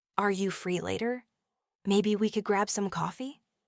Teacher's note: could grab some coffee is delivered with a gentle, inviting, often slightly rising tone.